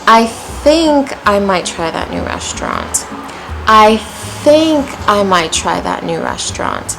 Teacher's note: It started off kind of low, then went high, then back to low. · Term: fall rise